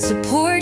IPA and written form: səˈpɔːrt (support)